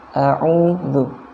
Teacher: U-nya dibaca dua harokat, jangan terlalu panjang. Bukan a'udzu, bukan ya.